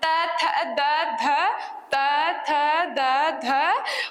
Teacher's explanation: त वर्ग जो है वो हमारा दंत से बोला जाता है।